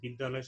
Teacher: বিদ্যালয় শব্দে কিন্তু আমরা দেখছি যে এখানে দুটো আ স্বরধ্বনি মিলে একটিতে রূপান্তরিত হয়েছে।